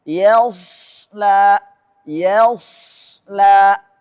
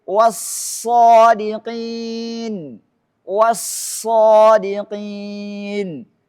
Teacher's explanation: Yang tebal hanya shadnya saja dan ada sifat shafirnya.